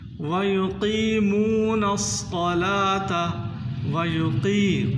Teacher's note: قاف کو پر کر کے پڑھنا ہے، موٹا کرنا ہے، اور قاف کو کھینچنا بھی ہے۔ بعض لوگ اس میں غلطی کر جاتے ہیں، پڑھتے ہیں وَيُقِيمُونَ الصَّلَاةَ، اس کو کھینچنا ہے قاف کو، وَيُقِيمُونَ الصَّلَاةَ، صاد کو موٹا کرنا ہے، تا کو باریک۔